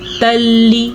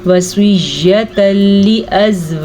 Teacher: उस कायदे के हिसाब से जब कभी कुरान मजीद में नून साकिन या नून तनवीन के बाद लाम या रॉ आ जाए तो दोनों हरूफ को आपस में मिला देते हैं, लेकिन गुन्ने के बगैर। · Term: इदगाम बिला गुन्ना